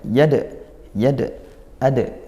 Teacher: Dal sukun dibaca Qalqalah sugro pantulkan huruf dalnya